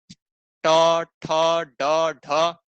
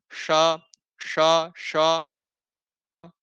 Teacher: मूर्धा कहते हैं जो तालु से भी ऊपर वाला भाग हो